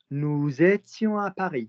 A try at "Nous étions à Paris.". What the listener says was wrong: I didn't ask for a fucking pause.